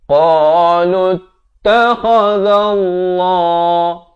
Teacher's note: Lafz jalalah dibaca tebal 2 harakat.